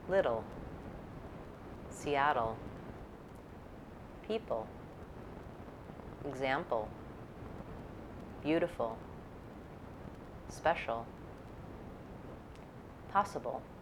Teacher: For syllabic L, the consonant is the whole syllable. It sounds like ol, ol.